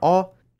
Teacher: Many vowels are shifted around compared to Standard German, like /a/ corresponding to Bavarian /ɔ/